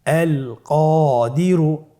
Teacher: কফের পরে আলিফ হরফটি এসেছে, তাহলে আলিফ হরফটিকে মোটা করে পড়তে হবে